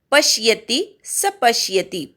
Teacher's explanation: पश्यति मधल्या दोन्ही प वर आघात